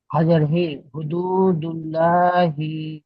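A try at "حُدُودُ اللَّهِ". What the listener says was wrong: ফের সেই লা হয়ে গেল, হুদুদুল্লাহি। আল্লাহ শব্দে লাম তাসদিদের আগের অক্ষরে যদি জাবার পেশ হয় তাহলে ল হবে। আর যদি আল্লাহ শব্দে লাম তাসদিদ যে রয়েছে, তাসদিদ তাসদিদ চিহ্নটা আপনারা এখন ভালো করে চিনতে পারছেন না।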